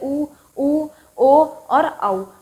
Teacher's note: होंठ जो है वो गोल आकृति में आ जाएंगे